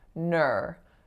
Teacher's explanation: an R-colored vowel in which the back of your tongue raises up and fills out the whole kind of chamber of your palate